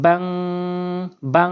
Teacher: এখানে বা আলিফ দুই জবর বান না বলে বাং বলতে হবে।